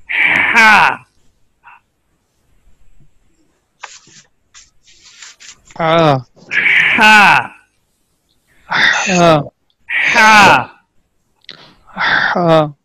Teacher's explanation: pronounces letter ha from the middle part of the throat